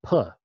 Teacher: the voiceless labial stop